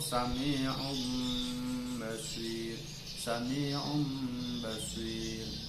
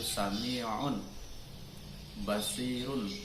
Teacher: Artinya nun itu masuk kepada mim. Nun sukun atau tanwin itu masuk kepada mim, sehingga tidak terlihat sama sekali bentuk bacaan huruf nun dan mimnya, nun dan tanwinnya, karena semuanya sudah masuk pada mim. · Khalisan murni, semuanya masuk kepada mim dan memberikannya ikhfa yang disertai gunnah di sisi ba. Ya, guna adalah suara yang keluar dari pangkal hidung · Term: iklab